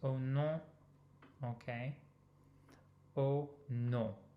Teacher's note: the OM gets us a nasal vowel